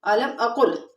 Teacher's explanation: اقل میں ادغام بلا غنہ ہو رہا ہے، یعنی قاف کا لام میں ادغام کریں گے لیکن غنہ نہیں کریں گے